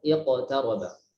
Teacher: Maka ketika qaf sukun sebelumnya kasroh tidak dibaca tafkhim nisbi. Ya, berarti dia tafkhim asli, ya, tafkhim asli ya.